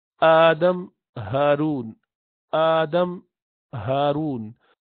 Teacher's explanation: یہ دونوں بالکل نیچے سے حلق کے آپ کو نکل رہے ہوئے محسوس ہو سکتے ہیں اگر آپ غور کریں، توجہ دیں کہ کہاں سے آواز آ رہی ہے. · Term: حمزہ ہا